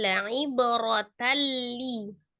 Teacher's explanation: Kalau ini idgham bila gunnah. Idgham ditasdid saja, tetapi tidak disertai dengan dengungnya.